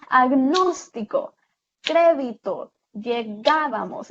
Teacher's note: las palabras esdrújulas, que son aquellas que tienen el acento en la antepenúltima